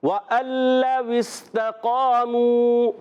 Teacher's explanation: یہ نون لام میں مل جائے گا، نون کی آواز نہیں آئے گی۔